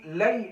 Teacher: یا سے پہلے ہمیں لام پر زبر مل رہی ہے، اس لیے ہم اس کو تھوڑا سا کھینچ رہے ہیں، یہاں پر یہ جائے لین کہلائے گی۔